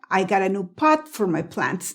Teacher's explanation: Yo puse la lengua para decir pot, pero no exploté pot.